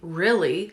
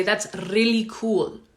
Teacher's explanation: In English, at least the way I speak it, we do not roll the R. So if you know that that's the standard, not rolling the R, and you listen to yourself and you hear yourself rolling the R, really, okay, then you know, okay, I'm doing something wrong.